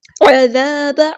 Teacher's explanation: عذاب، عین کو مستحلق میں زور سے ادا کریں گے، ذال باریک نرمی سے ادا کرنا ہے